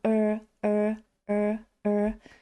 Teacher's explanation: ми трошечки загинаємо язик І кажемо р р як у слові nurse